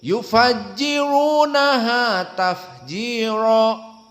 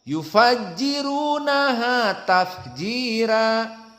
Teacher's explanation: besar Adapun di akhir tafjir maka di sini perbedaannya besar maka jumhur membaca dengan tafkhim tafjir Adapun Wars annafe dibaca dengan tarqik dan sangat jelas bedanya dibaca tafjira tafjira maka kita baca fokus